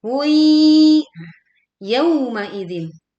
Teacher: Hui lebur disertai dengung.